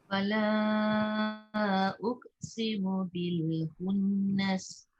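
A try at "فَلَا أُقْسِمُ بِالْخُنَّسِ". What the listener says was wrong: Okay, tapi kena dengung. Walaupun dia pendek, tapi atas nun tu ada sabdu kan. Dengung dia. Bil khunnas.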